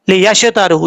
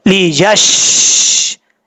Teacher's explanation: یش نہیں پڑھنا، قلقلہ نہیں کرنا. آواز جب شین کے مخرج میں زبان لگے تو وہاں پر آواز پھیلے گی اور جم جائے گی